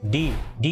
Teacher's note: On the other hand, अगर मैं consonant का साउंड निकालता हूं जैसे बी में आपके लिप्स ज्वाइन हो रहे हैं, डी में आपकी जो टंग है वो आपके माउथ के रूफ को टच कर रही है यानी पैलेट को टच कर रही है।